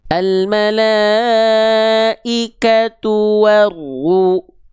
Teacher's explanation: Dia harus dibaca dengan keadaan tebal. Jadi huruf ro itu dasarnya dia huruf tipis, tapi ketika dia berharokat dhammah dia harus dibaca tebal.